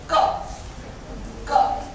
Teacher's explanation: Soft palate, मुंह के छत के पीछे वाला हिस्सा, वहां से हम क और ग बोलते हैं।